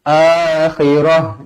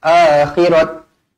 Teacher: Kalau berhenti pastikan akhirah jangan akhirat ataupun akhirati